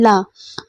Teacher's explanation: side से वायु निकलेगी और क्या है जीव आपका साइड से टच करेगी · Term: पार्श्विक